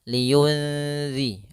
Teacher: tidak dimasukkan tapi disamarkan nunnya kepada huruf setelahnya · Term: ikhfa